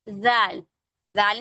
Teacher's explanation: जाल में भी टंग आपकी ऐसी टीथ के बीच में होगी, टिप ऑफ द टंग, पूरी जबान नहीं होगी, सिर्फ जो टिप होती है